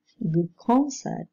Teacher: The alveolar one changes into a velar sound under the influence of the following velar plosive. All these changes are the result of economy of effort.